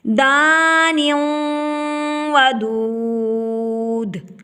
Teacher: دانیوں تنوین کے بعد واو آ گیا، یہاں پر ادغام مع الغنہ ہوگا، یعنی کہ ایک لفظ کو دوسرے لفظ میں ملا کر ناک میں آواز کو چھپا کر ایک الف کی مقدار میں غنہ کریں گے۔ دان ودود، وقف بالاسکان ہوا۔